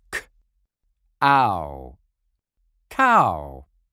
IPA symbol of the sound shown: aʊ